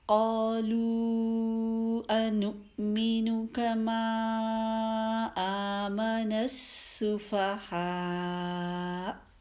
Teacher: ہم نے قالو کو آگے ملا کے پڑھا نا حمزہ والے لفظ کے ساتھ، تو اس لیے ہم نے اس مد کو اب لمبا ٹائم دیا ہے